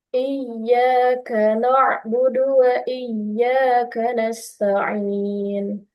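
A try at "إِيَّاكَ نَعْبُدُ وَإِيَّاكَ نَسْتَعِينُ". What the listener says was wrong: Jangan sampai berubah itu i-nya ke iya, i. Kayak masih ada bunyi iya, tapi iya.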